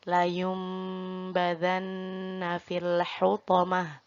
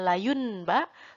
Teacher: Nun mati atau nun berharokat sukun bertemu huruf ba dibaca menjadi huruf mim dan ditahan selama 3 harokat. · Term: iqlab